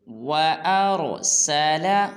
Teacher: وَأَرْسَلَ، آر میں را کو پر ادا کریں گے